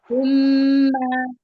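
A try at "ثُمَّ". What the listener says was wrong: हाँ, सुम्मा को आपने पहले सीटी की साउंड आई थी आपकी, सुम्मा में भी आपने सुम्मा कर दिया था, अभी आपने ठीक पढ़ा सुम्मा।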